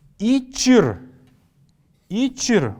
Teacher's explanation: Мы здесь после буквы «ч» слышим небольшой такой вот фоновый неясный звук. Поэтому я отмечаю его кружочком.